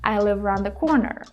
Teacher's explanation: first of all we combine live around live around right we don't pause